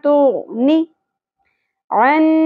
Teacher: نی نون کی زیر کو زیادہ نہیں کھینچنا تو نی عن نون مشدد یہاں پر غنہ ہوگا اواز کو ناک میں ٹھہرانا ہے